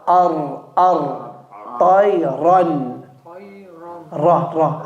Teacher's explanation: the ra, the tip of the tongue goes towards the front, the palate.